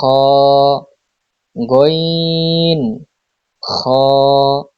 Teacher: হলকের শেষ হইতে গইন খ